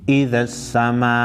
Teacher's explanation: حروف مدہ کے بعد مد ہے اور اس کے بعد حمزہ ہے، مد متصل کہتے ہیں، 4 الف کے مقدار مد کو کھینچیں گے